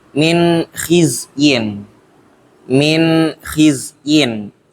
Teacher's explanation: nun mati bertemu ko maka dibaca jelas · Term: izhar